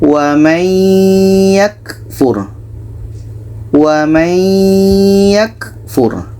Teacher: Bunyi nun kita masukkan ke ya.